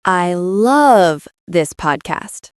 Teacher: Now the stress is on love. So you are saying you really, really love it. You feel it strongly.